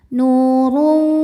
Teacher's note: Huruf ra dibunyikan secara tafkhim karena ra berbaris dhammah tanwin, maka ra dibunyikan dengan tebal.